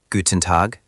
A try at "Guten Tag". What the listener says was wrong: That sounded like a question. For a greeting, it's a small lift, not a full question rise. Try a confident, warm finish. Guten Tag.